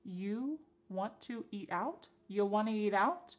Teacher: we have reduced want to to become wanna